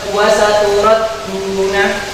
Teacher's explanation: Dengan matobi, bacaan ini akan dibaca wa saturat duna, seperti itu. Huruf dal wawu akan dibaca sebanyak 2 harokat. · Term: mat tabi'i